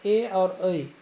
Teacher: ए और ऐ ये हो जाएगा कंठ तालव्य, यानी कंठ से भी और तालु से भी बोला जाता है।